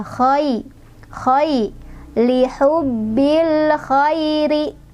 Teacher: khai di sini ada lin karena ada fathah di huruf kha ketemu dengan ya sukun. Cara bacanya pendek aja, dilunakan aja.